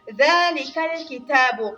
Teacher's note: زال د ژبې له څوکې نه ادا کېږي او د یو الف اندازې کدر ته پورته کش کېږي ځکه هلته مد مقصوره راغلی ده.